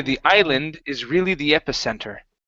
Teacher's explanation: the word Island the s in this word is silent